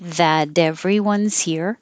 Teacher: That everyone, the T will change to a D.